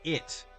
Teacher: There's that stop at the end where the T should be.